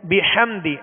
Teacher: ہا کی آواز کو حلق سے, درمیانے حلق سے ادا کریں گے اور واضح کریں گے